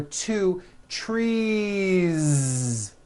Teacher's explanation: It's not trees with an unvoiced S. It's trees with that voiced ending.